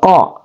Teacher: dia adalah huruf keluar dari pangkal lidah pangkal lidah kita jadi ingat keluar dari pangkal lidah jadi Q di sini ada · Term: huruf aqasal lisan